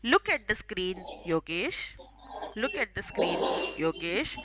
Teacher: before taking your name and along with that my intonation will go down